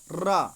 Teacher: देखिए बोलते हैं तो जिह्वा मुड़ करके घर्षण करते हुए आती है, तो इसी को हम लुंठित कहते हैं, लुंठित व्यंजन।